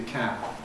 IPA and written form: kæb̚ (cab)